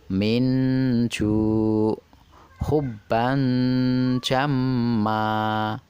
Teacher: dengan menyamarkan dan mendengungkan bunyi nun mati atau tanwin tanpa merubahnya menjadi Bunyi ng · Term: Ikhfa